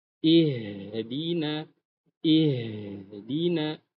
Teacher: Dan h-nya besar ya di dekat dada ya.